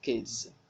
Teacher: in kid the last sound is a voiced sound so the plural marker s is pronounced as Z